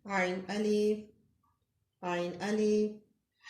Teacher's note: हरूफ हल्की में से हलक के दरमियान से